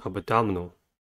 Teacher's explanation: Abdominal has four syllables and the stress is at the second one.